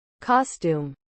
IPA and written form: ˈkɒstjuːm (costume)